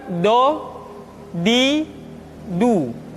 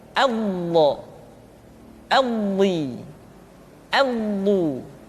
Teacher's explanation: Diucapkan dengan menyentuhkan dua sisi lidah kita dengan geraham-geraham atas. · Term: huruf bo